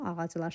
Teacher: vurğu ların üzərinə düşür. Çünki ordakı lar cəm şəkilçisidir.